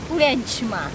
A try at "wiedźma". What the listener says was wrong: Wiedźma. No, too much wea. No, just simple. Wiedźma. And quick.